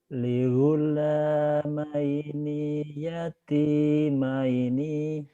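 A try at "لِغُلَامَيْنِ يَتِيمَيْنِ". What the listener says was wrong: tapi pendek. Ligula maini yati maini pendek ya Pak ya. Pendek. Ligula maini yati maini maini. Ligula, ligula, ligulamai, ligulamaini yatimaini, ligulamaini yatimaini. Ligula, ligula, ligulamaini yatimaini.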